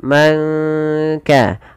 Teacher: di sini samarkan suara nunnya kepada huruf Kaf